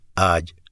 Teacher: یہ دیکھیے گا، یہ جو لفظ ہے نا آج، اگر میں اس کو زبر کے ساتھ ملاؤں تو یہ بنے گا اج۔ اچھا، اگر میں اس کو ایک الف لمبا کر کے ملا دوں جیم کے ساتھ تو یہ بنے گا آج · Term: مد